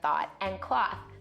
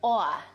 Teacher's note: what we call a raised vowel in words like thought and cloth. It sounds something like aw.